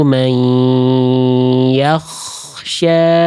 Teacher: Kalau kho lebih ada kasar sedikit dari ujung tenggorokan makhrajnya. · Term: kho sukun